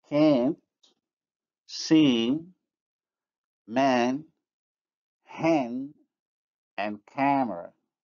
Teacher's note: the nasal is not articulated. It is absorbed by the vowel, which becomes nasalized. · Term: nasalization